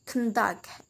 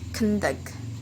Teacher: if it is noun, the stress put in the first syllable, and if it is a verb, the stress put in the second syllable